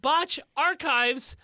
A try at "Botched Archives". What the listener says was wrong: Botched archives. Botched. You said botch archives.